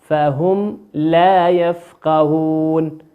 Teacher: الميم في كلمة فهم هي ميم ساكنة أتى بعدها حرف اللام، واللام من حروف الإظهار الشفوي